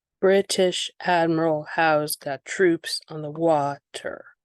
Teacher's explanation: stressed unstressed stressed unstressed stressed unstressed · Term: trochaic